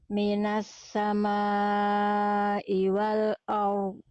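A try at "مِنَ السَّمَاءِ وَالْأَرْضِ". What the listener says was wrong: Ro-nya udah bagus, cuman hamzahnya jangan ke bawah tebal. Jadi a dulu. Wal a tipis, baru ro tebal, ya. Minas samai wal ard. Wal ard.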